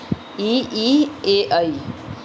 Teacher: वे स्वर जिनका उच्चारण करते समय जीभ का अग्रभाग तालु को स्पर्श करता हो।